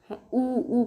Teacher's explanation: उ ऊ करके देखो तो आपके ओठ एकदम बाहर को निकल आएंगे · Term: ओष्ठ